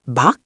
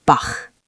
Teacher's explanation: We want friction, not a stop. Keep it open and breathy. Bach. Bach, like a soft throat scrape. · the hard ach sound is farther back in the throat, like you're gently fogging up a mirror.